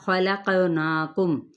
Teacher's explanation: خا پر ہے، قاف بھی پر ہے، لیکن قاف پہ ہم نے قلقلہ کرنا ہے